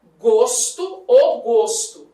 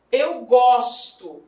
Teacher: gosto é verbo e a pronúncia é aberta